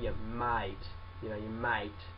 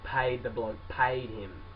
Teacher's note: The E's in our sentence, they're followed by like an AI, like an I sound.